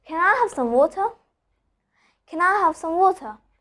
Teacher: I'm not pronouncing the R. Instead, I'm telling it ah in all the words.